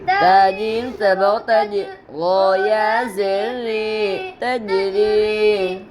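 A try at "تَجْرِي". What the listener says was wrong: تا کے اوپر زبر ہے, زبر کو جلدی پڑھے تھوڑا بھی نہ کھینچے. جیم کے اوپر جزم ہے, جزم والے حرف کو پیچھے والے حرف سے ملا کر پڑھتے ہیں.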